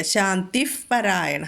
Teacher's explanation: ശാന്തിഹി വിസർഗം കഴിഞ്ഞിട്ട് പാ വന്നതുകൊണ്ട് അവിടെ ഫ എന്ന് ഉച്ചരിക്കുക.